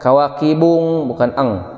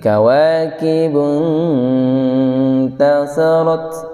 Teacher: nun bertemu dengan huruf ta, maka posisinya didengungkan, namun konsentrasinya banyak ke huruf an. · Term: ikhfa